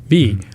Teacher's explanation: You got to, make sure every syllable is pronounced right. And like V would be, lower lip and upper teeth, V.